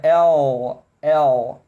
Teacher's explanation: você pensa no L, que sua língua tá toda lá pra frente. E tá tensa.